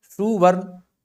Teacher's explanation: स के बाद ह्रस्व उ आ गया है स के बाद ह्रस्व उ मध्य स्वर आगम है